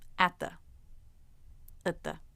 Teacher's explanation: The vowel in at can be a, but you'll usually hear it as the schwa.